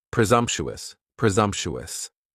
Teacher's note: Next is presumptuous, and presumptuous has 4 syllables, and the stress is on that second syllable, and the S almost sounds a little more like a Z.